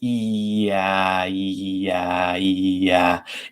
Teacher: if you transition between those two sounds if you say yeah yeah you can actually feel that your jaw opens up so that your tongue can go lower and it's literally moving further away from the roof of your